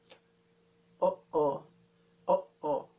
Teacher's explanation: You can hear that stop, the glottal stop in the middle.